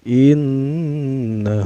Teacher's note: Nun di sini bertasydid secara bacanya didengungkan artinya guna itu dengungnya Ine huit Inna huhuhu huhuhu ini dihukumi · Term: ghunnah